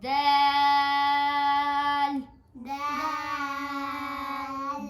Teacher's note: دال کو ہم 6 الف کے برابر لمبا کرتے ہیں